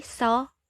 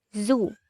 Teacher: when you say saw you cannot feel any vibration on your finger but when you say zoo there is a vibration that you can feel on your fingers therefore when you say so it is a voiceless sound and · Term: voiced sounds